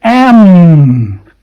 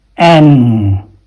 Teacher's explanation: m with your lips closed n with your lips open